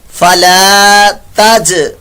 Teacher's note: جیم ساکن کے اندر یہاں پر قلقلہ ہو رہا ہے